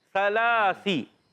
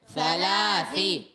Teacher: لام کا کھڑا زبر ایک الف کھینچیں گے